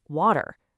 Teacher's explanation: that t sound in water, it softens into a really light d sound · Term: connected speech